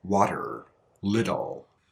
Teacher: to English speakers this flap T actually sounds more like a D sound